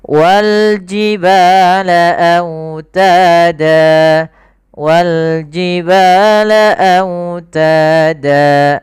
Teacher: Yang awalnya fathatain bunyinya dan kita ganti dengan fathah ketemu alif saja. Maka menjadi danya menjadi panjang.